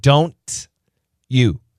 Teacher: Don't you becomes don't you chew chew. It gives us the ch sound. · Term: blending